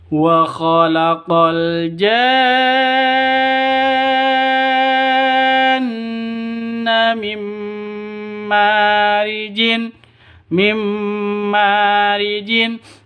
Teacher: nun mati bertemu dengan mim. Cara bacanya masuk ke mim disertai dengung dua ketukan. Karena bacaan idgham bi gunnah.